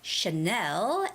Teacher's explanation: when you're saying Chanel that brand name you have to put the emphasis on the second syllable the stress goes on the second syllable which is Chanel and